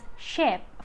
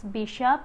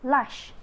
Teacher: Sh is voiceless alveopalatal fricative, and the initial position is shape, for the medial is bishop, and the final is lush.